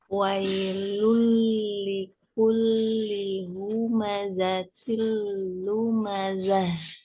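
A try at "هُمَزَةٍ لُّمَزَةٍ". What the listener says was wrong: Oke, lebih berdesis pada za. Kalau za kurang desis. Cuman desisnya ini nggak pakai angin. Humazatil lumazah. Bukan lumma. Luma. Humazatil luma. humaza. Humma. Huma.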